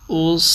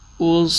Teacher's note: حمزہ کی آواز باریک اور صاد کی موٹی